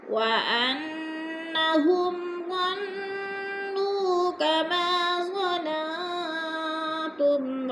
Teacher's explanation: अन्ना की नून मुशद्दद है, गुन्ना करेंगे, नाक में आवाज़ ले जाएंगे।